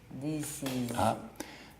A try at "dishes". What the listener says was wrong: Sh, z. And make it sound natural. Because you were going very slowly and give me a big pause.